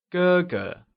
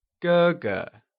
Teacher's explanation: Elder brother becomes 哥哥. It is pronounced using the high level tone.